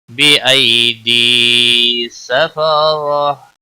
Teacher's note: بی یا لین ہے تھوڑا نرمی کے ساتھ کھینچ کر ادا کریں گے. دی یا مدہ ہے ایک الف کے برابر کھینچ کر پڑھیں گے.